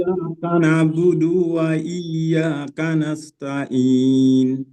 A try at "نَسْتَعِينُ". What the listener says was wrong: نستعین عین نکالنا ہے. نستعین.